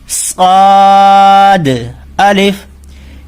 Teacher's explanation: اس صاد کو پڑھتے سمے ہونٹ گول نہیں کرنے ہیں، ہونٹ ایک ہی جگہ رکھنے ہیں. صاد اس طریقے سے پڑھنا ہے، نہ شواد کرنا ہے نہ سواد کرنا ہے.